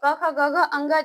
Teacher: कंठ के माध्यम से बोला जाता है